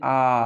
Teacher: विवृत स्वर मतलब खुला हुआ, मतलब जिसका उच्चारण करने में मुंह पूरा खुल जाता है। आप बोल के देखिए आप बोलिए, आप विवृत स्वर को आप उच्चारण कीजिए, आ, पूरा मुंह खुल रहा है ना, आ, तो ये विवृत स्वर है।